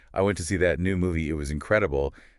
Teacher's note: that pause before incredible along with that Rising intonation really drives home how much I love the movie